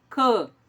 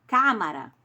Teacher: a sílaba tônica está no Cã e leva o acento circunflexo. Esse A, ele é fechado.